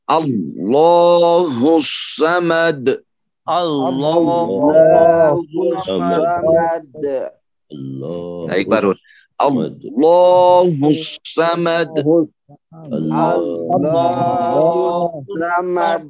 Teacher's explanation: جب ملا کر پڑھیں گے، سواد کے اوپر تشدید ہے، پچھلے حرف سے ملا کر پڑھیں گے